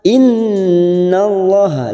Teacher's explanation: Innun yang bertasdid gunna musaddadah kita tekan selama 3 harokat. Innallaha, lam jalalah yang ditulis fathah kita baca tafkim.